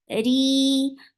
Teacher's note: For kasra, give E sound whenever ra is with kasra. It is light and it will be 2 counts long because this is a long vowel.